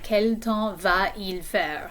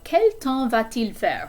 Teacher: It would be like saying quel temps va-il faire? So because there are two vowels back to back like that, we're going to add that T in the middle